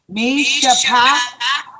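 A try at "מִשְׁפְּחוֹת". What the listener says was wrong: No, you gotta remember. Sheva make it silent. The first one. So this is how you say this. You would say Mish Pekot. Mish Pekot. You see, because the first Sheva is silent. The second Sheva is pronounced as if it was in the beginning of the word.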